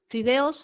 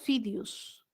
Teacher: Y esta alternancia de las vocales, e, i o la o con la u.